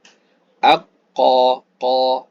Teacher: salah kemudian huruf q qun qun hur Q ketika menyebut dia lidah pangkal lidah kena sedikit pada anak tekakah jadi dia lebih kepada nak tenggelam ke dalam